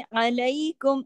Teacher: आइन को आइन की तरह पढ़ना है, गले से,